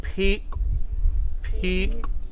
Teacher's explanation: see it's got an ejective K